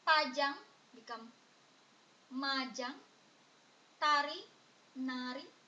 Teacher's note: P this one started with T This one started with s the p change become m the T change become n